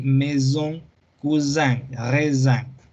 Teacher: una S en medio de dos vocales tiene sonido de Z